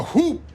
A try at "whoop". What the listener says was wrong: There's There's no H in whoop. It's silent.